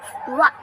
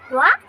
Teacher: तो वाह बोलते टाइम जो हमारी जीभ है वो दांतों को टच कर रही है और ओठ की शेप गोल बन रही है। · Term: दंतोष्ठ